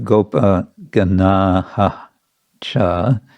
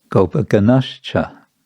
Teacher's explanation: the ash is the sandhi adjustment because of the cha coming in the next word. So instead of Gopaganaha cha, which is a little bit awkward to pronounce, the Sanskrit rules are aiming to make pronunciation as easy as possible.